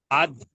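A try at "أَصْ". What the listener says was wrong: আদ নয়, আপনি আদ আওয়াজ করছেন, ওটা আস আওয়াজ করেন। আস, আদ আস।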